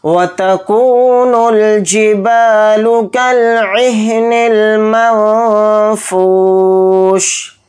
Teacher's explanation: तो ध्यान से देखिए, नून साकिन आ गया, नून साकिन के बाद फ़ा आ रहा है और फ़ा हरूफ इख्फ़ा में से है, तो नून की आवाज़ को इख्फ़ा करके पढ़ेंगे यहाँ पर, यानी नाक में छिपा कर पढ़ेंगे, इस तरह से. फ़ा के साथ वाव मद्दा, फ़ा वाव पेश फ़ू को थोड़ा खींच कर पढ़ेंगे, शीन को यहाँ पर साकिन करके पढ़ेंगे हालत वक्फ़ में.